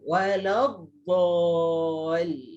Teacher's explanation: Dia kena dari tepi walad aja, lekatkan tepi lidah pada geraham atas, lepaskan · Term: huruf dot